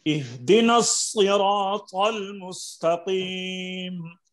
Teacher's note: مستقیم کی قاف کو بھی پر کرنا ہے